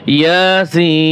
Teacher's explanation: আর এই মদ্দে লাজেম হরফি, এরা ওই যে বলছি আগে, হরফি মুসাক্কাল এবং মুখাফফাফ দুইটাই সূরার শুরুতে আসে। ইয়াসিন, ইয়া 1 আলিফ টান হবে, সিনে 4 আলিফ টান হবে। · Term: মদ্দে লাজেম হরফি মুখাফফাফ